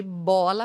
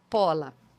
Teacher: Por exemplo, o ensurdecimento. Então, em vez de bola, fala pola